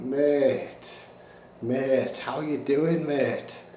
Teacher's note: first we're going to talk about the word mate with a falling tone so this is the happy mate this is the friendly mate